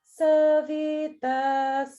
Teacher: So sa and vi are both the middle, and then tas is the one that goes down.